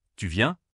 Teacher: Pour une phrase interrogative fermée, réponse oui, non, la voix monte à la fin. · La voix monte sur viens. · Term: L'intonation